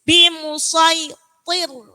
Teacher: Tapi harus tetap tebal. Toknya tebal, roknya tipis.